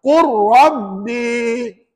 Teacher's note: Masukkan lam tu ke dalam huruf ra dan dibaca tanpa dengung. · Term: idgham mutaqariban